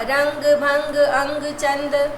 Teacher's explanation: अनुस्वार जिसमें नाक से ध्वनि निकलती है